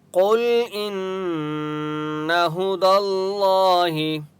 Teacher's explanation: قاف مستعلیہ میں سے اس لیے قاف کو موٹا پڑھیں گے۔ ان نون کے اوپر تشدید ہے اس لیے یہاں پر غنہ ہوگا۔